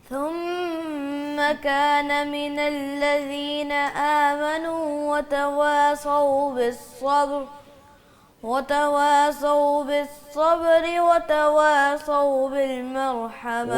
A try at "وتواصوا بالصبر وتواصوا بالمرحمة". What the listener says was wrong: وتوا پہ ہونٹ گول نہیں کرتا ہے.